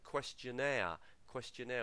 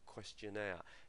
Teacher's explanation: the stress falls on the third syllable